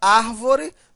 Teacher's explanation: A sílaba tônica é a antipenúltima, portanto, uma proparoxítona